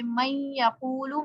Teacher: یہ لفظ 6 حرفوں آ جائیں تنوین کے بعد یا نون ساکن کے بعد، تو ان میں سے کوئی حرف آ جائے تو ادغام ہوگا. یعنی نون کو ان حرفوں میں اس طرح ملا کر پڑھے جائے گا کہ دونوں ایک ساتھ مشدد ہو جائیں